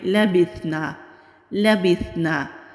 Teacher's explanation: با کے نیچے زیر ہے، با کو سا سے ملائیں گے، سا کو نرمی سے ادا کریں گے، نون کے اوپر زبر ہے، آگے خالی الف ہے، الف مدہ ہے، ایک الف کے برابر کھینچ کر پڑھیں گے۔ · لام کے اوپر زبر ہے، لام کو اسی طرح جلدی پڑھیں گے، کھینچ کر نہیں پڑھیں گے، لا نہیں کریں گے، لبثنا لبثنا۔